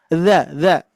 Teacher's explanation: ujung lidah menempel ke gigi seri atas